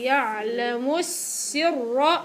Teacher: السين الأولى إلها زمن، زمن الرخاوة، والراء مفخمة